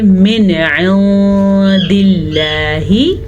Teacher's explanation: हम पढ़ेंगे मिन इंदिल्लाहि, नून साकिन के बाद दाल हुरूफ इख्वा में से आया है, तो हम नून साकिन की आवाज़ को छुपा के गुन्ने के साथ पढ़ेंगे, क्योंकि इख्फा का कायदा है।